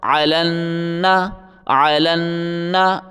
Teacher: صرف لکھائی میں آتے ہیں۔ لام کو نون کے ساتھ ملائیں، لام کو نون کے ساتھ سختی کے ساتھ ملا کے پڑھیں